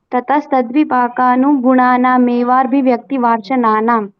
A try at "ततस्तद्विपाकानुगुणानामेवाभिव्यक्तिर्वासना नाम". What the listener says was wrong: हाँ सुंदरम।